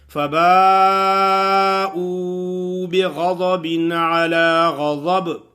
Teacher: کچھ لوگ ایسے پڑھتے ہیں او پڑھتے ہیں لیکن وہ مدہ کو ادا نہیں کرتے. او کے حرف کو تھوڑا سا کھینچنا ہے 1 الف کے برابر تو وہ ادا ہوگی